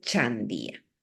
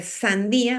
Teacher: la ch es una palatal la s es una fricativa